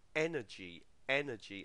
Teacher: photograph instead of the o sound next word energy energy and the stress falls on the first syllable there